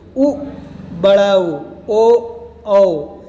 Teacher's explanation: पहले देखेंगे वृत्ताकार स्वर। जिन स्वरों के उच्चारण के समय होठों की स्थिति वृत्ताकार या गोलाकार हो जाती है, या गोल आकार की हो जाती है, उन्हें वृत्ताकार स्वर कहते हैं।